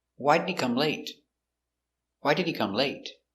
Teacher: we stress important words why stress the verb come